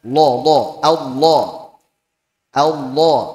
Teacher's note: huruf lam makhrajnya menyimpang ke makhraj huruf nun saat mengucapkan lam tebal